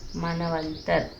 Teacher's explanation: मनु plus अंतर, मनवंतर। उ और अ मिलकर व बन रहा है यहाँ पर। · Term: व का उच्चारण